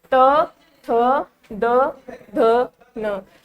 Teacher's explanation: हमारी जीवा दांतों पे सीधी स्पर्श हो रही है, इसको बोलेंगे दंत्य, त थ द ध न।